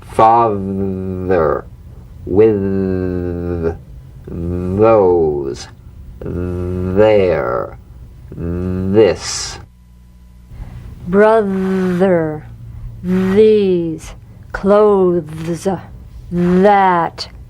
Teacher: feel that vibration on the tongue outside the teeth you've got to let the tip of the tongue stick outside the teeth and vibrate sustained in these words father with those there this brother these · the voiced tongue point to teeth fricative th · slip the rim of the tongue between the teeth and sing, feeling a buzz or vibration. Feel that vibration on the tongue outside the teeth. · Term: voiced th, voiced TH